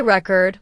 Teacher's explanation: For example, let's take the word record. If you say record with stress on the first syllable, it's a noun, like a music record.